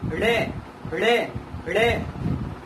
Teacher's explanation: पहले जीभ ऊपर जाएगी, फिर बहुत स्पीड से लुढ़क कर नीचे आएगी, ठीक है, वो होते हैं हमारे उत्क्षिप्त या द्विगुण व्यंजन।